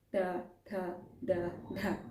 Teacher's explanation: अब बात कर लेते हैं मुर्धा स्थान की मुर्धा स्थान अर्थात जिसमें आप अपनी जीवा को हल्का सा मोड़ देते हैं ट्विस्ट करते हैं और फिर उसके द्वारा आप उच्चारण करते हैं